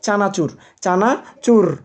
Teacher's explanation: চানাচুর র টা হচ্ছে কম্পন জাত ব্যঞ্জন